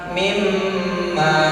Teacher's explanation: Mimma agak ditahan, digunah, ya, agak didengung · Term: idgham bi gunnah